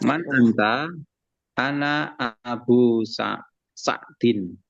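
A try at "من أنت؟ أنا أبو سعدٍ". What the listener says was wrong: Tayyib, sahih.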